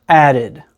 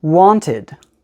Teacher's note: d comes after a t or a d we pronounce it the vowel sound is not an i sound and it's not an e sound it's something that we call the schwa sound